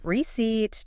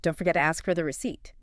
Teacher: It's just receipt. Two syllables. stress on the second one.